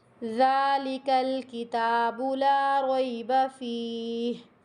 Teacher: رک رہی ہوں تو فیہ ہا کی آواز کمپلیٹ آنی چاہیے